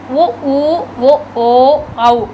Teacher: உதடுகள் குவித்து ஒலிப்பதால் தோன்றுகின்றது